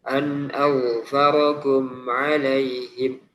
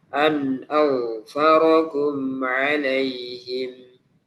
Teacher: mim memiliki sifat bainiyah sehingga dia ada aliran sedikit